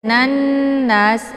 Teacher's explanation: nunnya dileburkan ataupun dimasukkan ke dalam huruf nun yang kedua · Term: alif lam asyamsiyah